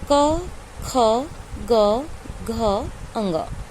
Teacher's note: का वर्ग का जितने भी वर्ण हैं, कंठ की सहायता से बोलते हैं।